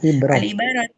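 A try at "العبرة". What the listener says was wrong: Bukan ibaroh, kalau ibaroh nanti jadinya ibarat. Ibroh.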